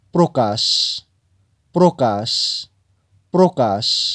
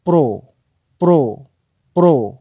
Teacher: কি উচ্চারণ করছেন প্রকাশ প্রকাশ প্রকাশ তার মানে প এর অফলা প্র এর সাথে একটি ওকার এসে যাচ্ছে